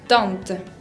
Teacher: Se expulsa por la nariz, se exagera la nasalidad de la vocal y se trata de pronunciar lo menos posible la N o la M. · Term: nasales